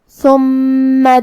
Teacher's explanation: میم پہ تشدید ہے، لہذا 2 حرف کے برابر ہم حرف المیم کو پڑھیں گے